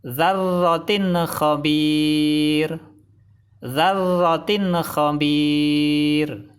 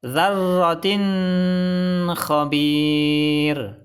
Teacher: Salah, karena bacaan ithar tidak boleh dengung.